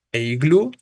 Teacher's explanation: iglú, también aguda, su sílaba tónica es la última y termina en vocal, ¿no? Entonces, en ese sentido, habrá que acentuarse forzosamente, ¿no?